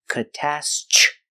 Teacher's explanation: The TR makes the ch sound like chicken.